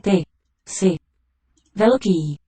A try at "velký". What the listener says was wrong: Velký. Long there, second vowel.